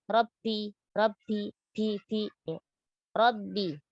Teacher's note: sempurnakan sifat syiddah pada huruf ba, jangan membacanya dengan sifat rakhawah. Ya, atau dia hamas, Rabbi, ya.